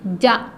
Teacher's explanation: دیکھیے زبان کی بیچ کا حصہ اوپر لگانا ہے, زبان کا بیچ کا حصہ اوپر کے تالو سے لگانا ہے